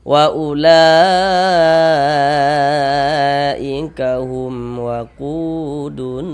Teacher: Kalau mad jaiz itu ada yang membacanya dengan dua harakat, tapi kalau mad wajib tidak. Semuanya sepakat dibaca dengan empat harakat seperti itu. Wajib dibaca empat harakat panjangnya minimalnya.